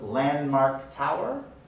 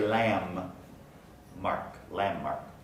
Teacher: the d in the middle of landmark doesn't get pronounced